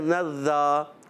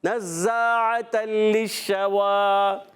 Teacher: ایک الف یعنی 2 حرکات کھینچ کر ادا کرتے ہیں، اور زا سیٹی کے ساتھ ادا کریں گے، سختی نہیں سیٹی کے ساتھ